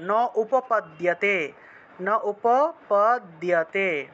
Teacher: এই দন্তীয় ন ওকারটা উ এর মতো উচ্চারিত হবে